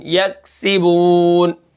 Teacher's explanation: کاف کو ہم قلقلہ نہیں کریں گے کیونکہ یہ کاف باریک ہے۔